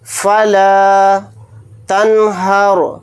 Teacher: نون ساکن کے بعد ہا آ رہا ہے اور ہا اظہار حلقی کے حروف میں سے ایک حرف ہے تو یہاں پر نون کی آواز کو ظاہر کر کے بلا غنہ کے جلد پڑھیں گے